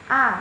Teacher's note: vokal rendah atau bawah yang dibentuk apabila rahang bawah diundurkan lagi sejauh-jauhnya